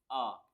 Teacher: एक ही मध्य स्वर है, आ। छोटा आ जो है, इसमें क्या है, इसमें जीभ के बीच का हिस्सा यूज होता है।